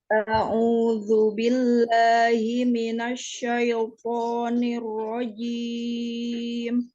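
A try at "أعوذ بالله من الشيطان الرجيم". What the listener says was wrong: Ya, jelaskan huruf hamzahnya. A'u, a'udzu. Himinasyaiton, syaito, jangan syaito, jangan syaito, tapi syaitoni, lembutkan dia sukunnya, tebalkan dia toknya.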